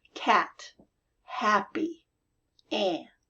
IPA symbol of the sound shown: æ